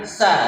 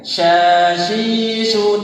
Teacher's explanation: kalau sa itu desisnya tipis ya, desisnya tipis. Tapi kalau ditambah titik 3 itu desisnya berantakan banyak